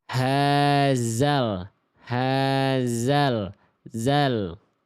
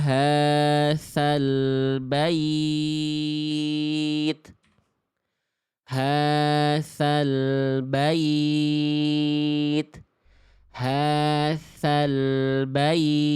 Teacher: Makhraj huruf zal gimana tadi? Ujung lidah nempel ke ujung gigi atas.